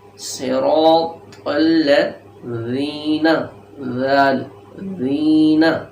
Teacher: صراط الذین، تو پڑھیں گے پھر ذال پڑھیں گے، زا نہیں پڑھنا